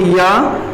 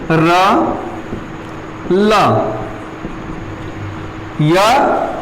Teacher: य का उच्चारण स्थान तालव्य हो जाएगा, र का मूर्धय हो जाएगा और ल का दंतय हो जाएगा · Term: अंतस्थ व्यंजन